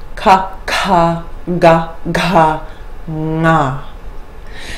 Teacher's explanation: The guttural consonants are made in the back of the throat, contact between the back of the tongue and the soft palate. Most can be made with the mouth wide open.